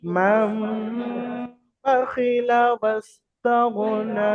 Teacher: নুন সাকিনের পরে হরফে ইকলাব থেকে বা এসেছে। তো নুন সাকিনের আওয়াজকে মিমের দ্বারা, এই যে ছোট্ট মিমটা দেওয়া রয়েছে, এই মিমের দ্বারায় পরিবর্তন করে একালিফ গুন্না সহ পড়তে হবে।